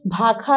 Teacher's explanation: षटकोण के श को हम यहाँ पर षटकोण के श से स में भी उच्चारण करते हैं और ख में भी उच्चारण करते हैं।